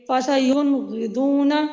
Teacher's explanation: یہاں پہ نون کا جو ہے وہ اظہار سب سے کم ہو رہا ہے